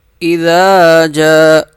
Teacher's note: اذا جاء نصر اللہ والفتح، اذا جاء، ذال کو 1 الف کے برابر کھینچیں گے کیونکہ اس کے ساتھ الف لکھا ہوا ہے۔ جیم کو ہم 5 الف کے برابر کھینچیں گے، اس کے اوپر مد ہے۔